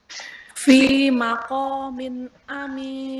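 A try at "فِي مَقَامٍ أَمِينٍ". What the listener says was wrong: Jadi ada gunnahnya itu suara nun sukunnya dipanjangkan, bukan dipanjangkan, ya tetap dikeluarkan tapi tidak dipanjangkan. Nun tanwin bil kasri nin. Fi maqamin aminin. Nanti beda kalau kita pangkas malah jadi aneh. Fi maqamin aminin. Nah, kalau kita alirkan memang malah itulah yang harus dilakukan ya. Fi maqamin aminin. Ya, jadi suara gunnahnya harus dikeluarkan, dibaca, dikeluarkan, dialirkan, tapi tidak sampai gunnahnya tasydid atau idgham atau ikhfa.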